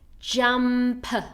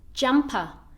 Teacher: he added that extra schwa which completely changed the actual word from jump to jumper